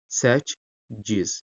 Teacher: K-lardan biri c formasını alacaq. Yəni hərfin keyfiyyətində bir problem var. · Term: keyfiyyət dəyişikliyi